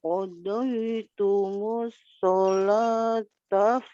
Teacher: Solah panjang ya. Iya, 2 harakat.